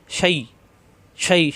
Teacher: শা জিহ্বার মাঝখানের তালুতে